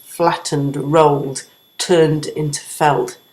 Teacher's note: that series of three verbs there all creating a heaviness because we have stressed syllables beginning each of those words